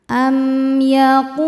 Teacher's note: Qu hukumnya mad thobi'i zohiri. Sebab ada wau sukun sebelumnya harakat dah. Cara bacanya huruf qof panjang dua harakat.